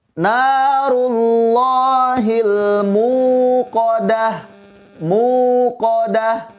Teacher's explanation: Biasanya anak-anak suka membaca akhir ayat 6 dengan kalimat narullahil muqadah, bukan muqadah. Bacaannya tidak perlu disentak karena bacaannya panjang, yaitu hukum mad tabi'i atau mad asli.